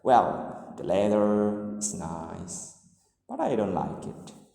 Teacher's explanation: the rise-fall intonation indicates a reservation. So the speaker hesitates or to fully express his or her thoughts.